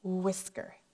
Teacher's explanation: And WH, when they're together, we do not say wh, but it's not making a new sound, which makes WH the trickiest digraph. W and H, it's almost like the H is silent.